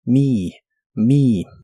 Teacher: Y usaremos la palabra mi, es la terminación me en ideas como recordar me o ayudarme. La e se pronuncia como una i larga o doble.